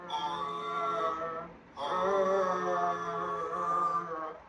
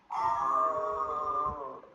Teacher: the sound is coming from the back of your mouth and your throat, back here.